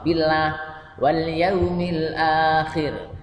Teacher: Kalau billah ini tarkik ya. Lam jalalahnya ini tarkik, didahului kasroh ya.